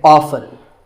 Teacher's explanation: the more common pronunciation is with the T silent. So I recommend that you always say often.